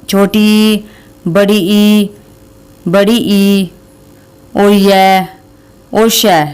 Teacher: इसमें ई से छोटी ई, बड़ी ई और य और श, ये भी हमारे तालव्य में आते हैं